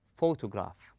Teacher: we say photograph we stress on the first syllable then we go easy · We stress on pho. We place a strength or force on the first syllable and we go easy on the rest of the word. We say photograph.